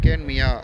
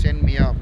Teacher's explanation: மியா என்ற அசைச்சொல்லில் உள்ள இகரம் தனக்குரிய ஒரு மாத்திரையிலிருந்து அரை மாத்திரையாக குறைந்து ஒளிக்கும். இவ்வாறு குறைந்து ஒழிக்கக்கூடிய இந்த இகரம் குற்றியல் இகரம் என்று அழைக்கப்படுகிறது.